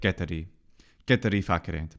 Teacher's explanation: the long vowels here in the various places are definitely glossed over too quickly in quite a few places